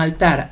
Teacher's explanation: Altar tiene la mayor fuerza de voz en tar